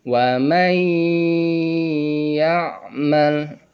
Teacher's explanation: Walaupun dileburkan tetapi tidak dengung. Yang benar adalah dileburkan dan disertai dengan dengung. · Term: idgham bi gunnah